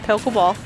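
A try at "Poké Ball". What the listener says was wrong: Almost sounded like you said a polka ball. Did you hear you say that? I definitely heard polka ball.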